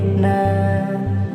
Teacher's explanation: নুনের মখরাজ জিহবা অগ্রভাগ দুই পাশে নয় কিনারা, সামনের উপরের দাঁতের মাড়ির সাথে লাগিয়ে বলতে হবে না